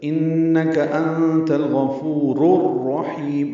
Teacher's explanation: انت الغفور، غین پر پڑھیں گے، فو واو مدہ ہے، 2 حرکات لمبا کریں گے، را کو را سے ملانا ہے، ادغام شمسی ہے۔ الغفور میں لام پڑھا جا رہا ہے، الرحیم میں لام نہیں پڑھا جا رہا